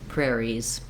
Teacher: If it's singular, it just sounds like prairie. And then if I add the letter S, I have the sound Z